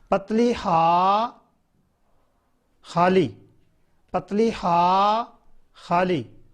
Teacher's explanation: आगे है पतली हा, और ये हलक से अदा होगी।